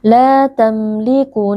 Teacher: mim sukun dibaca dengan jelas tanpa berdengung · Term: izhar syafawi